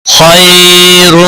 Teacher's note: خا حروف مستعلیہ میں سے ہے، موٹا پڑھیں گے. خائے یالین ہے، تھوڑا نرمی کے ساتھ کھینچ کر ادا کریں گے.